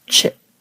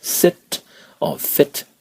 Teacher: in Burmese words, you do not really have a closing sound, so do not close it off the way you would close it in English, like sit or fit with the T sound.